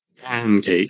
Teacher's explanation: So you're not doing a lot of creak, you're not doing a lot of breathiness.